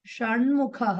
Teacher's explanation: షట్లో ఉన్న టకారం కాస్త టవర్గ అనునాసిక అయినటువంటి నకారంగా మారుతుంది. సో షట్ ముఖః కాస్త షణ్ముఖః అయింది.